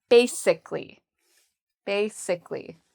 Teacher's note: Ba is the first part and that's where the stress is. So we say ba louder and longer. Basic like sick.